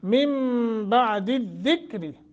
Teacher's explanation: نون ساکن کے بعد جب با آ جاتا ہے تو پھر اس نون کو میم سے بدل کر پڑھتے ہیں، اور یہاں آپ کے قرآن مجید میں نون کے اوپر چھوٹا سا میم لکھا ہوا ہوگا، ہے کہ نہیں ہے؟